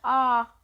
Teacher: जिन स्वरों के उच्चारण में मुख द्वार सबसे अधिक खुला होता है विव्रत कहते हैं।